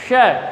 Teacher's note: और यह जो स है इसका उच्चारण करते समय अपनी जो जीभ होती है वो मुख के ऊपर की ओर जो तालु है उसको स्पर्श करती हुई यह ध्वनि उच्चारित होती है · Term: तालव्य श